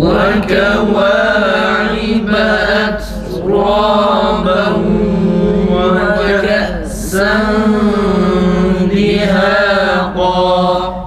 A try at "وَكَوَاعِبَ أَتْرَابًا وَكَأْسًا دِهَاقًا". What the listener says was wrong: Bu şiddet sıfatı olmuyor arkadaşlar. Önce nefes tam kesilsin, sonra harfi okuyup geçelim. Etraba.